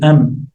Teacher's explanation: you have the two lips coming together. am So, and the same at the same time there's a nasal sound. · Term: meem